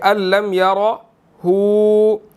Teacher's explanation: را جو ہے وہ موٹا ادا کریں گے